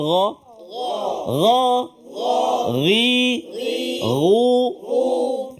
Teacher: jadi gha di permulaan rongga kerongkongan kita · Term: huruf gha